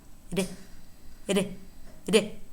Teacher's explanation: And finally we have R, R, R, which is known as the tap or the flap, because what it is a single hit or a single tap of the tongue tip against the alveolar ridge.